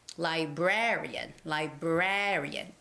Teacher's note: librarian has the second syllable stress librarian librarian the syllabus the stress goes on the syllable raa